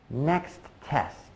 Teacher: I might have stopped at the end of next but only for a very short period of time before going right back to the next T sound for test